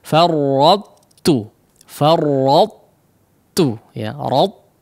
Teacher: ada sifat itbaqnya terlebih dahulu, baru masuk kepada huruf ta ketika diucapkannya. Seolah kita ingin mengucapkan huruf ta yang ditasydidkan, tapi ketika dikeluarkan ternyata huruf ta, ya. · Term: idgham naqis